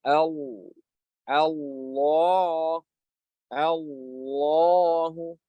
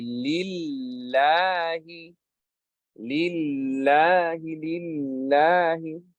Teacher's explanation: With the heavy lam, the back part of the tongue goes up. With the light lam, the back part of the tongue goes down. And there's, of course, there's narrowing in the throat as well with the heavy lam.